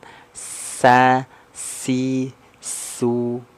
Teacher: dia sifatnya assfir assfir itu berdesis sa n makhrajnya dari ujung lidah sejajar dengan gigi seri bawah · Jadi gigi kita rapat ya, ada sifat desisan. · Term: huruf sin, as-safir